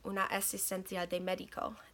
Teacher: Es las dos palabras, una asistencia, ahora están juntas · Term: encadenamientos